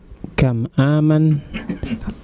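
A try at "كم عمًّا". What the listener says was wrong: ada tasydidnya di situ.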